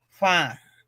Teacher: with the sign, the nostril sign, mean it has to go low tone from the nose.